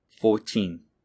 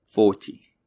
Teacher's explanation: for numbers in the teens the second syllable the teen is stressed for multiples of 10 the first syllable is stressed